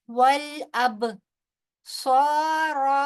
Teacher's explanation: صاد جو ہے وہ پر پڑھا جائے گا اور صاد کے بعد جب الف مدہ آتا ہے تو وہ الف مدہ بھی پر ہی پڑھا جاتا ہے · با کے اوپر کیونکہ جزم ہے اور با جو ہے وہ حروف قلقلہ میں سے ہے، لہٰذا اس کی ادائیگی ہلکے سے جھٹکے کے ساتھ کریں گے